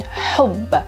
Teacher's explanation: the deep ha in hub, and the emphatic sod in sahara, and the throaty ay in Arabic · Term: Guttural, pharyngeal, and emphatic sounds